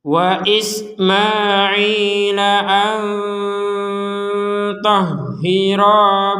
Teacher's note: Ternyata huruf to, maka dibaca dengan samar, disertai sedikit dengungan. Jadi kalau dibaca samar itu ada dengungannya sedikit, gitu, walaupun nggak 100%.